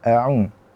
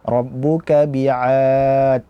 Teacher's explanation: Makhrajnya di wasatul halqi, di tenggorokan bagian tengah. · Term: huruf ain